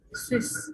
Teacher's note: colocar la boca en forma de U, pero vamos a pronunciar la I